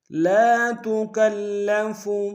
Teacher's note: لا میں الف مدہ ہے ایک ہندار میں کھینچیں گے۔ تکلف میں کاف کو لام کے سامنے لیں گے، شد ہے، زور دیں گے۔